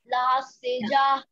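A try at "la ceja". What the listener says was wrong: La sekha. Sekha. J is pronounced as kh, KH. Kh in Spanish. So sekha, orekha, okho. There is no J in Spanish. J changes to kh, KH. Sekha.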